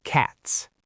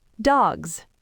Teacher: If a word ends in an unvoiced consonant, like the T in cat, then the plural sound is an unvoiced S, cats. The whole ending of the word is unvoiced.